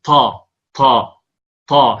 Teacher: نقول مثلا بدل أن يقول طاء يقول طا طا طا هكذا، طا، فهذه طاء شبيهة بالتاء لأنها طاء مهموسة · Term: الطاء التي كالتاء